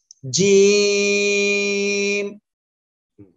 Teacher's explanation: অক্ষরটা উচ্চারিত হবে জিহ্বার মধ্যকান বা মাঝখান তার বরাবর উপরে তালুর সঙ্গে লাগিয়ে এই অক্ষরটা উচ্চারিত হবে